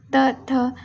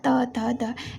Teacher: हमारे जो टंग है वो हमारे दांतों से टच होके बोला जाएगा